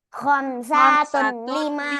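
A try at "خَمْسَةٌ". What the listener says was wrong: Sa-nya tidak panjang, sa-nya pendek. Coba diulangin.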